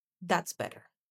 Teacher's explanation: Now it's fall tone because he's introducing new, absurd information